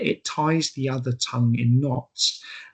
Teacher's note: the repetitious nature of tying is conveyed through the prevalence of the plosive T sound